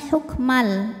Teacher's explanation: bunyi tanwinnya ini dileburkan ke lam Jadi bukan lagi hukman bukan n melainkan hukmal l tapi tidak